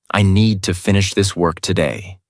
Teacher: Need, finish, work are strong. Other words are softer.